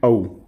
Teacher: औ जो है इसका उच्चारण स्थान क्या होता है? कंठोष्ठ होता है।